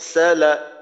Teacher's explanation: আর না হয় আর সালাানা আর বললে পাতলা হয়ে গেল তো যদি আর বলি এই ক্ষেত্রে জিহ্বার গোড়াটা উপরের দিকে ওঠে না যদি এইভাবে বলি সালা তাহলে কিন্তু জিহ্বার গোড়া উপরের দিকে ওঠার